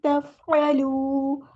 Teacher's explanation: عین کو مستحلق middle throat سے ادا کرنا ہے ، تفعلوا کرنا ہے، تفعلوا اس طرح نہیں پڑھنا، ٹھیک ہے۔